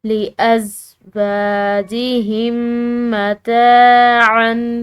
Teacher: ہو دوسرا میم مشدد ہو، تو ایسی صورت میں جو ہے دونوں میم کو آپس میں مکس کر کے ملا کر پڑھا جاتا ہے، یعنی کہ پڑھتے ہوئے ایسا فیل ہوتا ہے کہ ایک ہی میم پڑھی گئی ہے